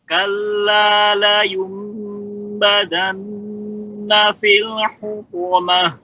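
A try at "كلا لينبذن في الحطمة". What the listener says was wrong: Ya, pu. Bapak masih pu. Suaranya masih di dalam, Pak. Suaranya dikeluarkan karena dia jahrun. Po. Tebal dan dikeluarkan, lepaskan suaranya. Po. Tadi suaranya masih menggumam di dalam aja.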